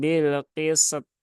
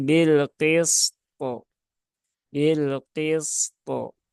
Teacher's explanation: Tapi dia harus ditunaikan dulu sinnya ya, sin yang rokhawah, kemudian to yang syiddah.